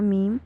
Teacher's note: ये अदा होता है आपके होंठों का जो खुश्क हिस्सा है उसको आपस में दोनों को जब आप जोड़ते हैं, मिलाते हैं, तो अब अदा होता है मीम।